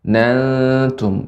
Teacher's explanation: di sini tipis ya, ikhfa-nya ya tipis ya. Karena ta merupakan huruf yang istifal ya, tidak tebal. Ya, tidak naiknya suara ke langit-langit.